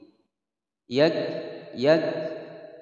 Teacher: kaf sukun harus ada harus berdesis ya, ada suara angin